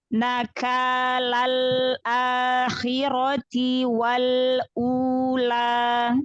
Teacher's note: jadi jangan nakal miring, a-nya buka ya, fathahnya buka